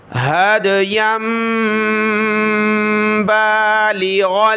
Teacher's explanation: یا کو چھوٹی میم کے ساتھ ملائیں گے، ناک میں آواز پیدا کریں گے